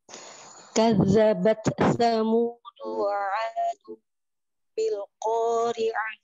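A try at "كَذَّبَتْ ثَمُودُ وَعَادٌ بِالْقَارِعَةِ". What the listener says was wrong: Bil qafnya hamzah, qafnya jahar. Bil qari'ah, jangan bil qa. Jadi kayak kaf menjadi hamz.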